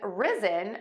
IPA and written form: ˈrɪzən (risen)